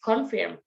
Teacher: The first example that is confirm. The stress word there is in the second syllable.